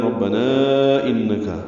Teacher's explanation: انکا میں نون مشدد پہ غنہ ہے، کاف باریک ہے.